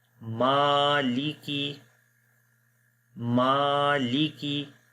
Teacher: میم کو لمبا کریں گے، لام اور کاف کو لمبا نہیں کریں گے